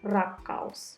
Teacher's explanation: Finnish R is rolled, similar to the trilled R in Spanish or Italian.